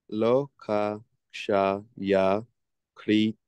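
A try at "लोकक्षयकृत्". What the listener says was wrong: Yeah. So you say it together. Loka, kshaya, krit. You can feel in your throat where the ka to the ksha. Loka, kshaya, krit. Kshaya, krit.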